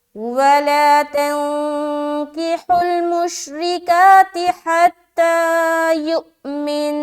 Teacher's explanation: ज़बर हमने नहीं पढ़ा लेकिन हमने नून मुशद्दद का गुन्ना बराबर पूरा किया